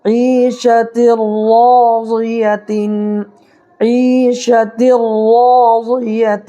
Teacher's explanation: دیکھیے یہاں یا ساکن ہے، یا ساکنی سے پہلے عین کے نیچے زیر ہے، تو یا ساکنی سے پہلے زیر ہو تو یا مدہ ہوگا، اس کو ایک الف برابر کھینچ کر کے پڑھیں گے۔ اور دیکھیے یہاں تنوین یا نون ساکن کے بعد حروف یرملون میں سے کوئی حرف آ جائے تو لام اور را کی صورت میں ادغام بلا گنہ ہوگا، تو یہاں پر ادغام بلا گنہ کر کے پڑھیں گے، یہاں پر گنہ نہیں کرنا ہے۔